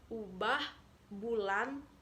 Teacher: ikhlas ijazah Hai yang kedua fonem uh adalah atas belakang bulat vokal ini dibentuk dengan bibir agak maju kedepan dan agak membundar serta ke belakang lidah agak meninggi